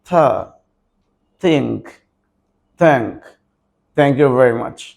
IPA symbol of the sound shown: θ